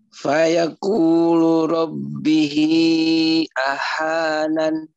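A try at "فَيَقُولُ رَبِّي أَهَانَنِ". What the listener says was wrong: Rabbi ahanan, bukan rabbihi. Rabbi ahanan.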